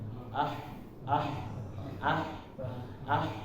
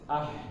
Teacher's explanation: Hatibis ketika kita sukunkan maka dia mengalir nafas ya. Kalau misalnya nafasnya belum mengalir berarti masih keliru ketika bacanya. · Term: nafas mengalir